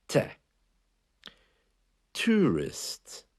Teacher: the letter T has a very slight catch of air just after it t tourist it gives it a bit of an edge out